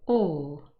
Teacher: a rounded vowel sound would be for example the vowel all here the lips are more rounded